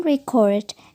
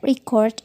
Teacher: in the noun record emphasis is on the first syllable